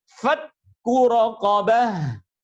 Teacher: Sedangkan yang ketiga adalah kondisi huruf kaf dan ta ketika tasdid. Nah, ketika tasdid, maka karena tasdid, sifat hamznya harus hilang sama sekali